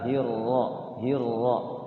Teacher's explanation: Jadi ra itu fathahnya pakai o, tapi lidahnya gerak getar ya.